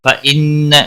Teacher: नून मुशद्दद पर गुन्ना होगा, न लाम साकिन को हिलाना नहीं।